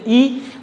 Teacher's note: अग्रस्वर यानी जीभ का उच्चारण करते समय उस जीभ के किस भाग का प्रयोग होता है, तो वो अग्र स्वर, आगे वाले जीभ का प्रयोग होता है। जैसे आप बोलते ई, तो जीभ की आगे वाले हिस्से का प्रयोग होता है